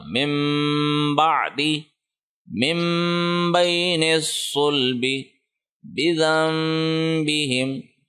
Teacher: غنے کی ایک اور مثال ہے جس کے اندر ہم نون کو میم سے بدل کے پڑھتے ہیں. یہ جو چھوٹا میم جب بھی آ جائے تو وہاں پہ اس صورت میں نون کو نہیں پڑھا جائے گا, پچھلا جو لیٹر ہے حرکت والا اس کو ڈائریکٹ میم کے ساتھ ملا کر غنہ کر کے پڑھتے ہیں. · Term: اقلاب